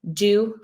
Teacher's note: be typical versus atypical so for example the final consolation deletion do for dog right they dropped the G that's normal